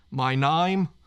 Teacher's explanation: instead of having a long A in the name, it's an I. So it's like my name. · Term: Aussie accent